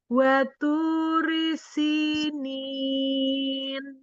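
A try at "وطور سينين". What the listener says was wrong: Tebalkan huruf to-nya. Waturi sinin. Waturi sinin.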